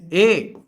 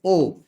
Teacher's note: अर्ध संवृत्त स्वर ऐसे स्वर हैं जिनका उच्चारण करते समय मुख अर्धविवृत्त की तुलना में कम लेकिन संवृत्त स्वरों की तुलना में ज्यादा खुलता है। इसके अंतर्गत आते हैं दो स्वर, एक तो है ए और दूसरा है ओ, ये कहलाते हैं अर्ध संवृत्त स्वर।